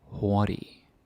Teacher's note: And yeah, the G is silent. You don't say the G.